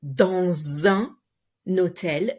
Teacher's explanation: You need also to link the S dans un hôtel, again, the Z sound.